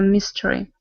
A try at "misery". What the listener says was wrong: Your misery, not your mystery, your misery.